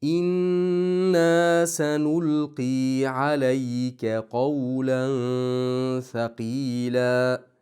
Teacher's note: G'unna komil tarzda inna g'unnasini ushlab bo'lgandan keyin ikki harakat miqdori cho'zamiz.